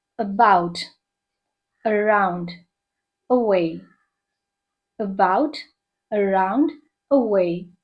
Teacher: ஏ இருக்குல்ல, ஃபர்ஸ்ட் இருக்கிற அந்த சவுண்ட் வந்து ரொம்ப ரெடியூஸ்டா இருக்கும். நம்ம சென்டென்ஸ்ல சொல்லும்போது இந்த அவை நம்ம சொல்லவே மாட்டோம், அப்படியே லிங்க்டாவே வந்துடும். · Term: ஷ்வா சவுண்ட்